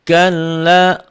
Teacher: Alladzi hum fihi mukhtalifun. Kalla, lamnya bertasydid aja, double. Nyamber dan double. Tapi tidak dengung, tidak ditahan. Beda dengan mim dan nun nanti.